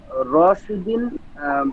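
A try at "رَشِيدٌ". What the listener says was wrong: এখানে দুই জের কেন হলো?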